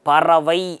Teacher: ஐன்ற எழுத்து தனக்குரிய 2லிருந்து குறைஞ்சு 1 மாத்திரையாக உச்சரிக்கிறது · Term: ஐகார குறுக்கம்